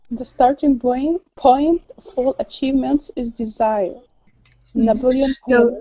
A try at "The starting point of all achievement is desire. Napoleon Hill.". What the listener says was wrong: So, Napoleon Hill, very good.